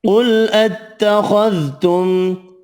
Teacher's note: قاف خا حروف مستعلیہ ہیں، دونوں کو پر پڑھیں گے، میم کا اظہار ہوگا۔